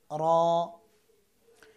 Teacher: র একবার কম্পন হবে